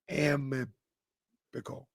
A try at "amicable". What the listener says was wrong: You're adding a letter. No, amicable that's the word, isn't it?